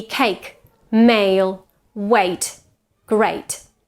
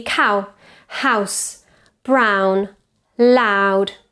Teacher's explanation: diphthongs in English are also vowels but they're special vowels because they are changing vowels they start at one position and they finish as another position